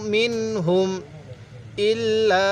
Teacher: এই লামের মধ্যে 3 আলিফ টান দিব, কারণ মদের হরফের উপর এইরকম চিকন চিহ্ন এরপর এরকম লম্বা হামজা থাকলে সেখানে আমাদের 3 আলিফ টানতে হবে।